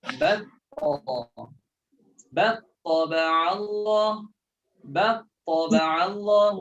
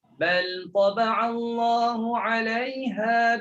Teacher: Boleh baca idgham kan lam dalam ta, boleh baca izhar kan lam dalam ta.